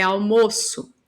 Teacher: Ele está aqui como um substantivo, não tá? Almoço, ele é fechado.